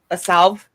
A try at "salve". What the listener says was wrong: That L is silent. It is salve. See, there's no L in it.